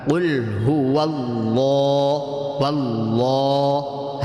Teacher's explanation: اللہ کے نام سے پہلے زبر تھا تو اللہ کے نام کو اب پر کرنا ہے